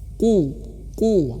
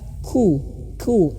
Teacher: lidah lidah ya ya bagian belakangnya qo qo gitu ya Oo sama makhrajnya seperti Kaf ya Ka Ka tapi membedakannya itu adalah dia tebal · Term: qof